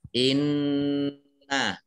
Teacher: mendengung ditahan dua harokat · Inna nun tasdid ya. Nun tasdid ini dibaca gunnah. Gunnah itu mendengung, ditahan 2 harokat. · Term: Nun tasydid